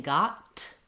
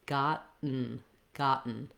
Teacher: i'm making the t by lifting my tongue for the t but i'm not releasing the air so i'm not saying got with a burst of air i'm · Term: stop t